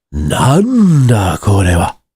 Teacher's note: That sounds a bit stress timed to me. Like it sounds like you're kind of hitting the nan, right?